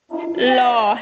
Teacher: জিভের দুপাশ দিয়ে হাওয়া বেরিয়ে যায় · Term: তরল স্বর